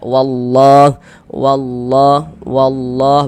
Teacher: Huruf lam yang di tengahnya nih huruf lam jalalah. Huruf lamnya lafaz allahnya ini kita baca tebal. Kita baca tabkhim sehingga kita baca wallah wallah wallah.